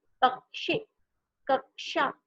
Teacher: जब आप उसे बोलोगे तो आपको क की आवाज भी आ रही है और श की भी आवाज आती है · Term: संयुक्त व्यंजन